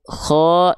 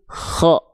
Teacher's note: dengan mengalirkan nafas seolah seperti mengorok atau mendengkur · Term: huruf K